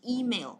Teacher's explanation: Email, và mình nhấn vào âm đầu tiên nhá.